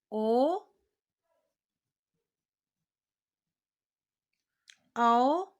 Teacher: ओ दयितो कंठोष्ठम, ओ औ का उच्चारण स्थान कंठ और ओष्ठ होता है।